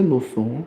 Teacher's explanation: 히읗과 시옷이 만날 때요. 히읗은 탈락합니다.